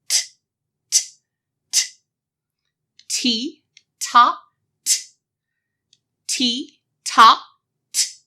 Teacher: See how my teeth are kind of closed and my mouth is open and I can feel the air puffing out?